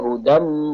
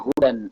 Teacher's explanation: Ingat, tanwinnya hilang, bunyinya suara mim.